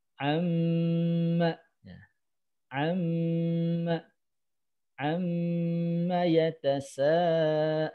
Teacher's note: mim tasdid itu menahannya dua ketukan